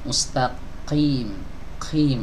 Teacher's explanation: Ada nafas yang ikut keluar ya. Nafas dorongan nafas atau aliran nafas yang berhembus keluar. Qim, ini terasa di telapak tangan ya. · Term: hams